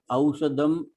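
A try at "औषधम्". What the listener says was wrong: Aushadham. There is a Mahaprana. Aushadam. Aushadham.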